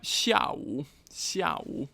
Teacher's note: fourth tone followed by third tone. So I'm just going to dwell a moment on these few words.